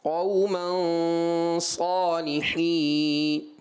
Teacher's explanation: غنے کو پر کر کے پڑھنا چاہیے تھا یہاں پر، کیونکہ جو سبب غنہ والا حرف ہے وہ پر حرف ہے